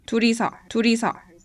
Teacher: when it's followed by a vowel it has the flap sound like a japanese r